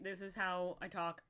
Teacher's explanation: I do have a little bit of like a natural vocal fry in my voice